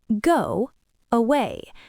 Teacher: Go away. To make both vowels clear, you have to stop the air in your throat for a split second.